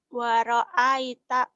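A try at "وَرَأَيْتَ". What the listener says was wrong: waraaita. Waro'ait. Pecah ya, jangan ada e-nya. Waro'ait. Ini yang dikatakan hamas, taknya mati.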